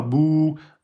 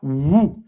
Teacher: Entre bou, c'est-à-dire le ouais de prolongation, on force pas. Bou. Alors que là, wou, on va forcer sur les lèvres un peu plus. Wou. C'est pour ça qu'ils l'ont mis à part.